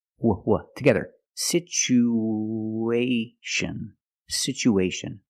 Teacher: we have two vowels together the U and the a we need to link these vowels with the sound w